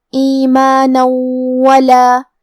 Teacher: کلمت ولا، یہاں بھی حکم ہے ادغام بغنہ تو ہم یہ تنوین کو واو میں ملا کے غنہ اور تشدید کے ساتھ ادا کریں گے